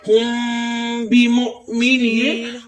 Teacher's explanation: آپ دیکھ رہے ہوں گے کہ میم ساکن ہے، اس کے بعد با آیا ہے، میم ساکن اس کے بعد با آئے تو ادھر اقلاب ہوگا یعنی قلب ہوگا، قلب پر ہم گنہ کریں گے